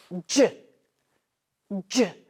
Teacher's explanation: our mouth is really stopping the sound, but it is buzzy on our throat